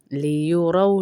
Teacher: रौ रौ में आपके होंठ फिर गोल हो जाएंगे